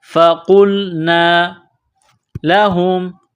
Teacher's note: قاف کو موٹا کرنا ہے ، لام کے ساتھ ملانا ہے، فقلنا لہم، ہا میم پیش